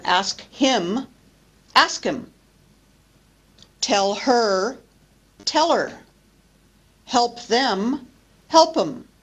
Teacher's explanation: the consonants at the beginning of pronoun forms disappear in English and this is another example of deletion in Connected speech [Music] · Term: disappearing pronoun forms